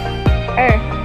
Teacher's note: between english r and air but with the tongue curled even further back